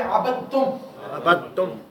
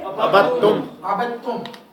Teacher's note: تو اب دال کو نہیں پڑھیں گے, با کو ڈائریکٹ تا کے ساتھ ملا کے پڑھیں گے